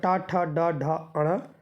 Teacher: टा वर्ग के मूर्धन्य कहलाते हैं, मूर्धा से उच्चरित होते हैं।